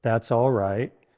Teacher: Stress the word right slightly more than the others to make it sound genuine. Use a warm tone with a downward intonation at the end of the phrase.